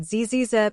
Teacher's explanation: notice the vibration this happens because Z is a voice sound